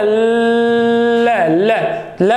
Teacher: ल ल ल बोलेंगे तो हवा सीधे नहीं निकल रही, क्योंकि जिह्वा ने अवरुद्ध कर दिया मार्ग। तब हवा निकलेगी तो सही, फिर साइडों से निकल रही है, इसीलिए इसे पार्श्विक वर्ण कहा जाता है।